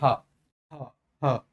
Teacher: हा की बात करेंगे तो हा का उच्चारण होगा कंठ के द्वारा। बोलकर देखिए, हा हा हा।